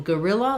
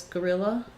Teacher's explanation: So in guerrilla, like guerrilla warfare, gorilla, we really actually say it the same as this gorilla, the animal. So because they're both stressed on the ril syllable, we have an unstressed schwa